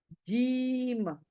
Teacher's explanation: यह जीम कहां से आदा होता है हमारा बीच का हिस्सा जुबान का बीच का हिस्सा ऊपर तालू को लगने से ऊपर जो तालू है ना हमारी ऊपर के हिस्से से लगने